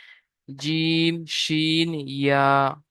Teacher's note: 6 নম্বর মাখরাজ, জিভের মাঝখান এবং তার বরাবর উপরে তালুর সাথে লাগিয়ে উচ্চারিত হয় জিম শিন ইয়া